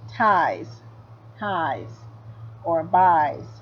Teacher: But when S follows a voiced letter, ties, or buys, then it has the Z sound